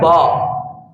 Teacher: با کو جب ادا کرتے ہیں تو آپ کے دونوں ہونٹ مل جاتے ہیں، یہ حروف شفویہ میں سے ہے۔ با آپ اس کو ادا کرتے ہیں تو اس کا اظہار ہوتا ہے، آپ کے ہونٹ ملتے ہیں اور لفظ کا پتہ چلتا ہے۔